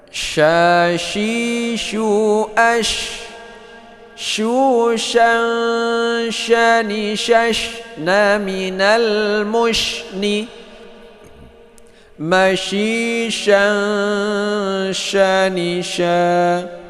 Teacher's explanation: Shin itu hamas, yaitu dia itu keluar angin saat kita baca